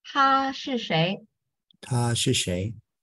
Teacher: You tend to start this 他 with the third tone, but it's not third tone, it's the first tone.